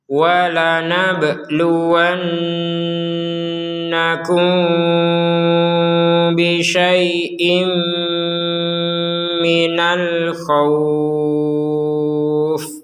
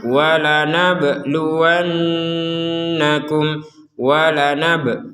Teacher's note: Ba sukun ini harus kita pantulkan. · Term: dipantulkan